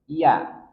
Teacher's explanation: huruf ya tengah lidah ditekan ke langit-langit di atasnya